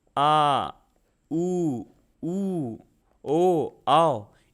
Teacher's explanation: इसमें आपकी जीभ जो है पीछे की तरफ जाती होगी, इसलिए ये पश्च स्वर है।